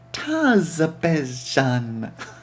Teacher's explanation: put all the emphasis on the first syllable and pronounced the last with a soft French sounding J.